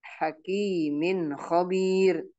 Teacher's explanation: Jadi jelas ya, jelas cara membacanya. Jadi tidak boleh dibaca dengung tapi dibaca jelas.